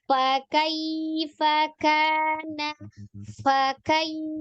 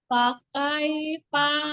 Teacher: Yang rokohnya fa tuh ada seperti niupnya dulu tuh, ada alhamsnya juga.